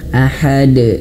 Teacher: huruf dalnya dia sukun ya, mati ya kan di akhir ayat, maka pantulkan, sifatnya yaitu qalqalah, pantulkan. Ahad. Mantulnya jangan sampai tertahan.